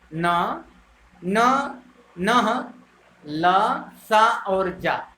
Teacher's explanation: ऐसे वर्ण जो जीभ के स्पर्श से ऊपर के दांतों से कुछ ऊपर मसूड़ों के साथ बोले जाते हैं वो वत्सर्य कहलाते हैं।